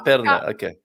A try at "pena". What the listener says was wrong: Pena, not perna. There we go again to the vowel sounds, right? The vowels. It's a P-E-N-A, Pen, and the E is A. This sound A. nasal, but it's a closed A. Pen. Pen. for leg, you have an extra letter. P-E-R-N-A.